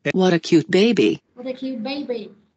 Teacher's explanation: Thì cái chữ baby này mình sẽ đi xuống giọng luôn ha